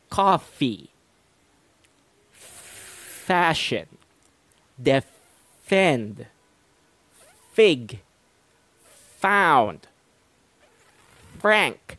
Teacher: I did not connect my lips together when making the F sound. Rather, I simply bit on the lower lip. Instead of the P sound wherein you connect both of your lips together, I simply munched down on my lower lip, created a small opening through which the air could come through, thus making the F sound.